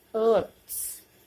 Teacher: In the sound earth. R remain silent.